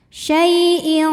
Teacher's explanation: Karena tanwin kasrah menghadapi qof. Maka tanwin dibunyikan samar-samar. Siap-siap ke qof disertai dengung. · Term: ikhfa ab'ad